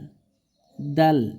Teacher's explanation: জিহ্বার আগা সামনের উপরে দুই দাঁতের গোড়ার সঙ্গে লাগাই